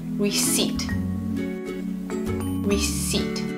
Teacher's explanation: This is another word in which silent letters get learners in trouble. When we say this word, we don't hear the P.